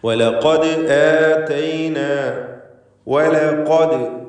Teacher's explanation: ഖാഫിന് മാത്രമാണ് തഫ്ഖീം വരുന്നത്. ശ്രദ്ധിക്കുക, മറ്റക്ഷരങ്ങൾക്ക് തഫ്ഖീമില്ല, എല്ലാം തർഖീഖിൻ്റെ അക്ഷരങ്ങളാണ്. ദാലിൻ്റെ സുക്കൂൻ ഖൽഖല സൂറ നൽകി ശബ്ദം ചലിപ്പിക്കണം.